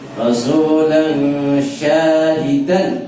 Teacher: lan tanwin ketemu sya, itu sifatnya hukumnya ikhfa. Rasulan syahidan, syanya panjang, hidan ada tanwin ketemu ain itu idhar.